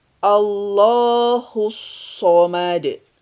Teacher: Sod, ingat, punya sifat sofir. Jadi desiskan.